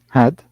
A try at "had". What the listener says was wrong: Had. first, at first I heard head. Hed. It sounded like Hed for me.